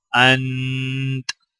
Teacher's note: چونکہ تا کے اوپر زبر ہے، وقف کرتے وقت تا کو ہم سکون کی حالت میں پڑھیں گے، اور تا سے پہلے نون کے اوپر بھی جزم ہے تو لہٰذا دونوں الفاظ کو سکون کی حالت میں ادا کیا جائے گا۔ · تا کی آواز، تا ہمیں پڑھنا نہیں ہے لیکن تا کی آواز محسوس ہونی چاہیے۔ انتا، آگے وقف انت۔